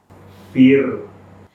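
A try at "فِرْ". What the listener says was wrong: Bagus, sudah tipis tapi masih banyak getaran. Jadi harus sedikit getarannya. Jangan fir. Ya itu sudah tipis tapi masih banyak getarannya. Fir.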